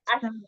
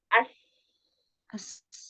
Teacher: Jadi dia tuh nggak kena gitu loh, ujung lidah kita ada celah. Karena dengan ada celah itu bisa ngeluarin suara yang sofirnya kan. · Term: huruf sin